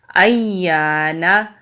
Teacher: یا کو ہم مضبوطی کے ساتھ ذرا رک کر پڑھیں گے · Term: مشدد